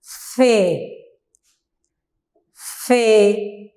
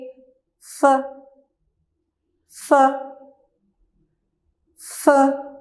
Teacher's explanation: जब हम मुकम्मल फे पढ़ते हैं तो हम थोड़ा सा उसको खींचते हैं, फे, फे। अब आधा पढ़ेंगे, फ, फ, फ, फे, फ, फे, फ, फे, फ।